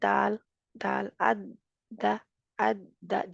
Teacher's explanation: अरबी का दाल कहाँ लगता है हमारा, वो जड़ पे ही लगता है, जो दरमियान वाली लाइन सी है दो दांतों के दरमियान